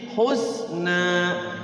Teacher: Awas hati-hati, ada sin sukun ya. Sin sukun itu tidak boleh mantul.